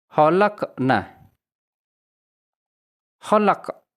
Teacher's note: khalaq huruf qaf mati, kemudian ini dikenal dengan qalqalah atau dipantulkan khalaq. Setelah qalqalah terdapat huruf nun kembali.